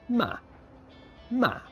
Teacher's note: the fourth one starts high and goes low